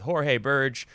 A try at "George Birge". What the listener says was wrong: Well, it's the G's a little harder on it. a George Birge.